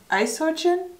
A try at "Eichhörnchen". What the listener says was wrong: Eich. Yeah. But the O with the dots? Eichhörnchen.